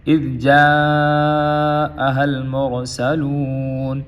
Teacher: جا یہاں پہ مد ہوگی 5 الفی